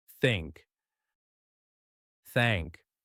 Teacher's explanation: voice off this time no vibration just air like you're blowing out a tiny candle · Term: voiceless